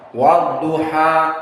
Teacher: Maka alif lam ditulis tanpa dibaca, langsung dari waw kepada dha, wadduha. Dan duha di sini hukumnya mad at-tabi'i, 2 harakat